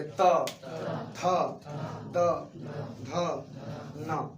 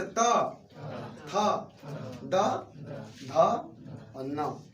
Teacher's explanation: इन प्रत्येक वर्णों के उच्चारण में हमारी जीभ दांत का स्पर्श कर रही है